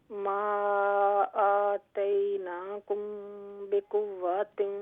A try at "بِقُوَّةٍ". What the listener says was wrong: بقوات واو کو لمبا نہ کرے. بقوة